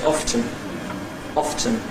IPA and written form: ˈɒftən (often)